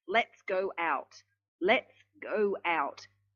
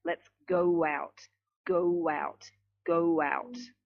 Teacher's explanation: That sounds like there's a W between the go and the out. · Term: intrusion